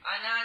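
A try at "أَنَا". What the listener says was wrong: پھر پڑھتے پہ انا جی. الف زبر آ، نون زبر نا، آنا. الف نہیں پڑھنا.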